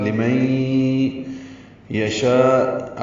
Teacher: طریقے سے پڑھیں گے، لمن یشاء میں نون میم ساکن کے نون ساکن کے بعد یا آنے کی وجہ سے ادغام ہوگا غننے کے ساتھ ، لمن یشاء، اب مئی میں آواز ناک کے بانسے میں